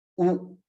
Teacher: when you pronounce this sound, you can feel that the tongue curls backward, or goes backward.